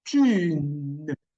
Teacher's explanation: If you see there's no G in the end of the characters, this combination, that means the N use your tongue to touch your teeth to form a nasal sound